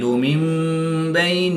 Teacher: نون ساکن کے بعد حرف با ہے تو یہاں پر اقلاب ہوگا، نون ساکن کو میم سے بدل کر غنہ زمانی کر کے پڑھیں گے۔